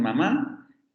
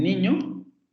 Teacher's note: tendríamos también las nasales, la bilabial como en mamá, la alveolar como en niño y la palatal